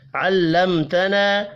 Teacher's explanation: میم ساکن کے بعد تا ہے، اظہار شفی ہوگا، غنہ نہیں ہوگا، اور الف مدہ وقف کی صورت میں بھی الف مدہ ہی پڑھا جائے گا۔